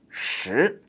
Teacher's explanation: That's a second tone, just going up.